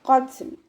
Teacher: ലാം കൊൽക്കല letter ഇല്ലാത്തത് കൊണ്ട് half സുക്കൂന് കൊടുക്കുക. ഖാഫ് ഇസ്തിഅലാൻ്റെ ലെറ്റർ ആയതുകൊണ്ട് നാവിൻ്റെ ബാക്ക് നന്നായിട്ട് മുകളിലേക്ക് പൊക്കി കൊടുത്തിട്ട് തഫ്ഹീം ചെയ്യുക കേട്ടോ. ഇവിടെ ത കൊൽക്കല ലെറ്റർ ഇല്ലാത്തത് കൊണ്ട് ഹാഫ് സുക്കൂന് കൊടുക്കുക.